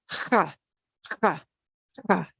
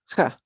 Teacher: J will sound like ha, ha, ha, a throaty H.